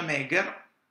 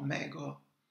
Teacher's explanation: in reggiano è una E, a Parma sarebbe una O